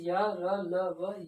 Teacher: या का उच्चारण स्थान तालु से, रा का उच्चारण स्थान मूर्धा से, ला का उच्चारण स्थान दंत से, वा का उच्चारण स्थान दंत ओष्ठ से। या वह हमारे क्या कहलाते हैं, अर्धस्वर कहलाते हैं। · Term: अंतस्थ व्यंजन